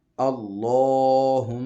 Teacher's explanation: یہاں پہ لام ہے، لفظ اللہ کا لام، ہم اس کو پر پڑھتے ہیں۔ میم مشدد ہے، اور میم مشدد جو ہے اس کے اوپر غنہ کیا جاتا ہے